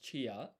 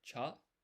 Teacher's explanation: this is not pronounced chia because this ya is half size. So this becomes a blended syllable, cha. And then we just stick an I at the end and then a ro, chairo.